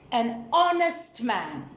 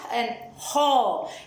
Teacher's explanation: The word honest starts with a consonant spelling Honest. But the consonant H is silent and the word starts with a vowel sound